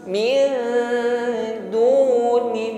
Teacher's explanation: nun sukun bertemu dal ikhfa ya, diiringi dengan bunyi dengung, dengungnya tipis